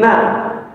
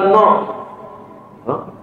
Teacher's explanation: Na itu tipis jadi na, bukan no.